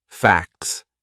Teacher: that would be a silent T it's in between a c and an S two consonant sounds